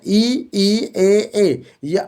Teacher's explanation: इ ए अग्र स्वर हुए